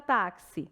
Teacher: Na palavra táxi, 4 letras, mas o X tem som de KS